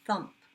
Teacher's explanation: Nothing but air. No buzzing at all. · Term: unvoiced